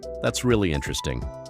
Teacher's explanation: Flat, neutral, maybe a little bored. Sounds like you don't actually think it's interesting [music] at all.